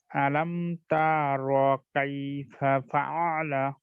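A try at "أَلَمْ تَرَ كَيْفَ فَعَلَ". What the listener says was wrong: হ্যাঁ, ফাআলা মনে হয়েছে আমার, ফাআলা, ওই সময় আইনটা একটু টান দেওয়া হয়েছে, ফাআলা পড়া হয়েছে, ফাআলা, ফাআলা। পারছি এখানে আপনার টানটা হয়েছে কেন, আপনার আইনটাকে চাপ দিতে গিয়ে টান হয়ে গেছে, ফাআলা।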